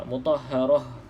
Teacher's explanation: kita tidak baca ta kalau kita berhenti. Kita baca macam huruf ha